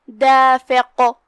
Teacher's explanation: آخری میں ہم قاف پہ رکیں گے تو اسے ہلاتے ہوئے اور قاف کو تفخیم سے پڑھیں گے